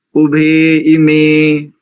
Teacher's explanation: भकार में जो एकार है ना वो दीर्घ है, आ और ई मिलकर के ये बनता है